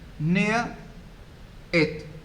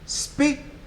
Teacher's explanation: The first syllable is stressed and the second is unstressed. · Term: feminine rhyme